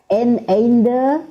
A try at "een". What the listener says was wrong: Nah, di sini en, bukan ein. En. Di sini sebagai partikel.